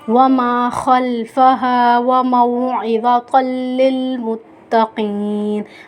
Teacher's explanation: ادغام بلا غنہ کا قاعدہ ہو رہا ہے، کیونکہ دو زبر کی تنوین کے بعد حرف لام